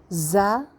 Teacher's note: زا سیٹی والا حرف ہے، نیچے کے دانتوں میں ریلائی کرتے ہوئے سیٹی کے ساتھ